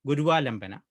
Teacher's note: Yeah, for example, if we consider the sequence Gurva Lambana, here it is a sandhi of two possible words where the first word is Guru and the second is Alambana. So the O in Guru gets converted into Va when we perform sandhi.